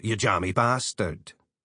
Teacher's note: when they're calling someone a name, as in, you jammy bastard, the vowel shifts differently to a short A sound, so it would appear as you jammy bastard.